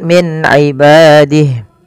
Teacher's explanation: Min ibadih ada nun sukun bertemu dengan ain, yaitu dibaca dengan jelas suara nunnya karena dia ada bacaan izhar halqi.